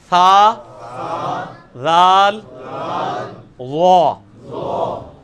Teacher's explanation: یہ زبان کے کنارے کو اوپر کے دانتوں کے کنارے کے ساتھ لگانا ہے